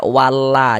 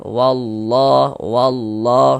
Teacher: Ini lafaz Allah nih, sebelumnya ada ini nih, ada harokat fathah nih, ada tanda baca fathah. Maka lafaz Allah juga dibaca tebal, dibaca tafkhim. Sehingga ini kita baca wallah, jangan dibaca walla, jangan, tapi dibaca wallah, seperti ditebalkan wallah, wallah.